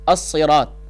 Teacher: الصراط کے اندر پہلا حرف ہے الف، دوسرا لام ہے لیکن لکھنے میں آتا ہے پڑھنے میں نہیں آتا. تیسرا صاد ہے، صاد کے نیچے زیر بھی ہے اور اس کے اوپر تشدید بھی ہے.